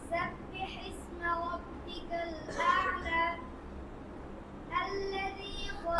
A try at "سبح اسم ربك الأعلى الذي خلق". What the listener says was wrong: আল্লাযী হবে না আল্লাযী হলে হামজাটা একটু মোটা হয়ে যায় কি হবে আল্লাযী পাতলা করতে হবে আল্লাযী হ্যাঁ